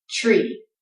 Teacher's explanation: With that TR sound, you can almost make a CH as in ch sound.